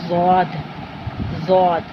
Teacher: یہ حرف موٹا اور اونچا پڑھا جاتا ہے · زبان کی کروٹ یعنی زبان کی سائیڈ، زبان کا جو سائیڈ والا کنارہ ہوتا ہے، اوپر کی داڑوں سے جب اسے ملاتے ہیں تو ضاد ادا ہوتا ہے۔ یہ دائیں جانب بھی ہو سکتا ہے اور بائیں جانب بھی۔